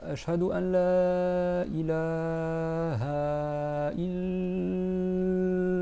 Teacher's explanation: rester 4 temps sur la shadda du lam et prononcer le Ha